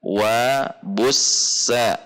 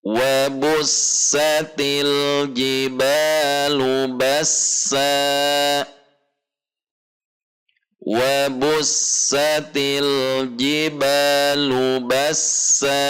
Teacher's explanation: dua harokat dengan sin yang mengalir ar-rohwah